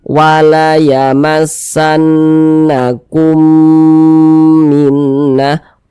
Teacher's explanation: mim sukun yang berjumpa dengan huruf mim saja idgham mimi ha karena dia idgham mimi ya maka kita baca dengan dengungan